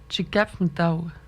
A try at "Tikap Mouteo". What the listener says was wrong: Tikap Mouteo. Comme s'il n'y avait pas de voyelle entre le P et le M, là. Tikap Mouteo. Mouteo. J'exagère un peu, là, mais